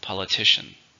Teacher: how many syllables politician four stresses on the third